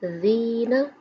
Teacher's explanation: یا کی مثال حروف مدہ ہے، ایک الف کی مقدار کے برابر کھینچیں گے، کیونکہ یا کے اوپر جزم ہو اور پچھلے حرف کے نیچے زیر ہو تو وہ یا کی مثال حروف مدہ ہے۔